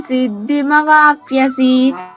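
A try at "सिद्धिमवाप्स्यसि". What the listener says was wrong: మవాప్స్యసి ప్యసి వస్తుందమ్మా. పాకి యాకి మధ్యలో సా కూడా ఉంది తల్లి. మవాప్స్యసి చెప్పమ్మా. మవాప్స్యసి పని అలా విడిగా చెప్పమ్మా. మవాప్స్యసి అంతే తల్లి.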